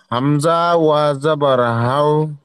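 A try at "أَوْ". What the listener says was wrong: হাও না, হামজা ওয়াও জাবার আও, আপনি হাও বলছেন কেন? হামজা ওয়াও জাবার আও, বা, ওয়াও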